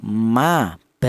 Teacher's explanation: kedua bibir baik bibir atas atau bibir bawah itu berperan semuanya. Kemudian dia rapat dulu atau nempel dulu · untuk huruf ba ini dan huruf mim itu dihasilkan dari kedua bibir yang rapat. Jadi kita melafalkan huruf ma atau bacaan ma atau ba ini itu kedua bibir baik bibir atas atau bibir bawah itu berperan semuanya. · huruf ba dan huruf mim ini dihasilkan dari kedua bibir yang rapat